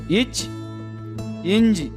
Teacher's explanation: நாவின் இடைப்பகுதி நடு அன்னத்தின் இடைப்பகுதியை பொருந்துவதால் பிறக்கின்றன